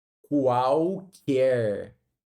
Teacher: Mas aqui nós temos um tritongo, porque esse L vira U.